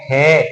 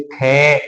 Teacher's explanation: ख में क्या है लंबी ध्वनि जा रही है यानी कि वायु ज्यादा बाहर निकल रही है